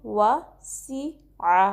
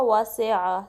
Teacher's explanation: सी को शार्पली पढ़ना है, सीन की सीटी वाज़े करनी है, ठीक है। रॉन्ग वे होगा वा से आ, से नहीं साउंड देंगे, इसको हम सी की देंगे, ठीक है।